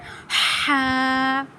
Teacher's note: یہ حروف حلقیہ میں سے ہیں، یہ حلق کے درمیان والے حصے سے ادا ہوتے ہیں۔ اس کو ہمیں ادا کرنا ہے ہا۔